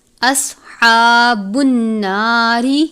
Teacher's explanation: صاد کو پر پڑھتے ہیں، سین کی طرح نہیں پڑھنا، پر کر کے پڑھیں گے، حروف مستعلیہ میں سے ہے، ہا کے اوپر کھڑی زبر ہے، کھڑی حرکات کی مقدار بھی غنے کی طرح 1 الف ہے، اس سے زیادہ اس کو لمبا نہیں کرنا۔